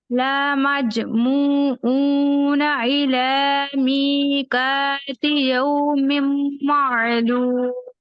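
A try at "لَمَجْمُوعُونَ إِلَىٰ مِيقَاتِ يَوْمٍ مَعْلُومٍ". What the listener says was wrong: कोशिश करनी है, ला को खींचना नहीं है, ठीक है? ला मज नहीं पढ़ेंगे, ला मज मतलब जल्दी से अदायगी कर दें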